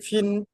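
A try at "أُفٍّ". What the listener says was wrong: না, ফা লাম দুজের ফিল, এই নুনটার উচ্চারণ হবে না, ফিন বলছেন, ফা দুজের ফিন হতো, ওটা লাম পড়তে হবে, ফা লাম দুজের ফিল, উফ ফিল। এটাই কায়দা।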